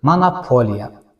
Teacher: A-ya keçir. Amma monopoliya sözündə iki o saiti birinci və ikinci o səsləri aya çevrilir.